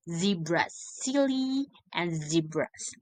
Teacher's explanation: Both consonants are alveolar fricative. Alveolar, the tip of tongue touches of almost touches the alveolar ridge or the tooth ridge.